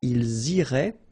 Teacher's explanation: make the liaison as well. You get this S and then a vowel after.